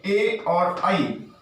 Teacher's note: इनका जो उच्चारण स्थान है वो कंठ और तालु है, इसलिए इनको कंठ तालव्य वर्ण के नाम से भी जाना जाता है।